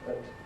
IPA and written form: ət (at)